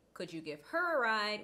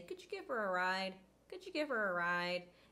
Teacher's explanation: alighted h sound occurs with the word her that is because her in this sentence is not stressed the word before it ends in a consonant sound